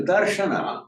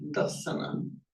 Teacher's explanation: Firstly, we know Pali doesn't have a sh, becomes a s. So that's how we get dasana.